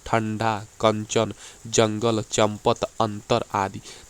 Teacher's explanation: वायु कहां से निकलती है नाक से निकलती है और उच्चारण झटके के साथ होता है · अनुस्वार का जब आप उच्चारण करेंगे तो जो आपका वायु होता है नाक से निकलती है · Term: अनुस्वार ध्वनियाँ